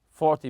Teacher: 10 numbers tend to always stress the first syllable